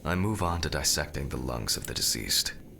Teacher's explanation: a film Noir like Beat cop or like detective voice like he has like a breathy like sexy film Noir voice